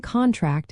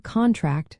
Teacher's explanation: the noun contract has the stress on the first syllable, while the verb contract stresses the second